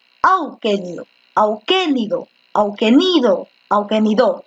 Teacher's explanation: Tú dices auquénido, ¿no? Entonces la fuerza de voz está en la antepenúltima. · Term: esdrújula